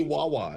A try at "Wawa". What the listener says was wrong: you say Wawa. You say there's a stress on the second wa that you're saying Wawa. I've heard it pronounced as Wawa. It's Wawa.